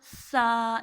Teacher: اس کا مخرج ہے زبان کا سرا اور ثنائے علیہ کا کنارہ · سا بھی 2 الف لمبا ہوگا، لیکن سا کو ہم لوگ پھوکلا پڑھیں گے